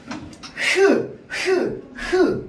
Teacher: 어디를 좁히냐면 목구멍을 좁히는 겁니다